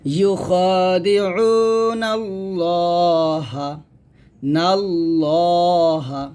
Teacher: মোটো হবে কারণটা হচ্ছে যে এটাকে আল্লাহ শব্দ লাম বলে, আর আল্লাহ শব্দ লাম এটা কি আসে, জবর আসছে, তাই আমরা এখানে লামটা মোটো করে পড়বো